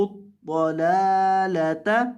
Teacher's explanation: یہ جو پہلا لام ہے اس کو لمبا کریں گے اور دوسرے لام کو لمبا نہیں کریں گے دو لام ہے پہلے لام کو لمبا کرنا ہے دوسرے کو